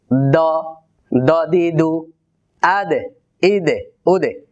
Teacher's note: জিহ্বার আগা থেকে যখন আদায় করা হয় তখন কিন্তু কলকলা হয়। এর একটা বড় কারণ হলো জিহ্বার আগাটা খুবই পাতলা, এটি উপরের দিকে লেগে ধাক্কা লাগে, আদে ইদে উদে।